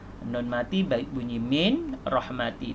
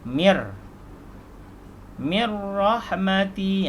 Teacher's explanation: Tetapi kerana ada hukum idgham bila gunnah, nun mati bertemu dengan ra, maka nun ini hilang dari mi masuk kepada ra